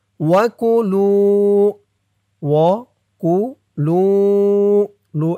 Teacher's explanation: লু এক আলিফ টান পেশের পরে ওয়াও সাকিন